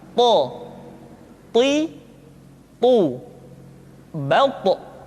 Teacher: To diucapkan dengan menyentuhkan ujung lidah dengan gusi-gusi dua gigi seri bagian atas. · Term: huruf to